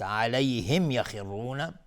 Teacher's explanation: خا از حروف استعلاء غلیظ تلفظ میشه و را هم حکمش استعلاء چون ضمه داره